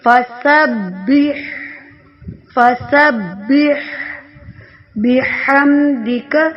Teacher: ہا جو ہے اس کو ادا کرتے وقت ہا کی آواز نہیں نکلنی چاہیے، بلکہ یہ رگڑ کا تو ہے، جب ہم ٹھنڈا پانی پینے آواز نکالتے ہیں۔